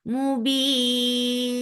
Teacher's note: This temporary sukoon has changed this 2 counts long vowel into 4 counts long. And it is madarid lis sukoon now.